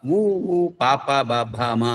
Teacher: అనేవి ఓష్ట్యములు అంటే పెదవులు సహాయముతో పలుకుతాము